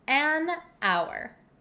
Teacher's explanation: we totally get rid of the h sound and that's why we say an hour